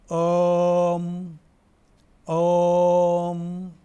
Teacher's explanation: आणि हा उच्चारत असताना ओठ बंद केल्यानंतर काय उच्चार येतं बघा, ओम ओम. तोंड उघडं असताना आणि तोंड बंद करताना कळत न कळत मचा उच्चार होत असतो. या दोन्ही ठिकाणी शक्ती कमीत कमी खर्च होत असते.